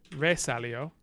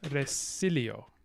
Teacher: you think would be re salio but actually it's resilio so you get neutralization of vowel qualities in these non-initial syllables